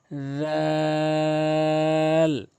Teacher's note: জিহ্বার আগা এবং সামনে দাঁতের আগা রাল এভাবে উচ্চারণ করবেন।